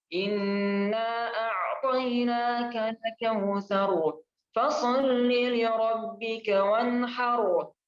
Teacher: Jadi inna itu dia nggak panjang 4 harakat atau 5 harakat, hanya 2 harakat saja, seperti layaknya mat tabi'i.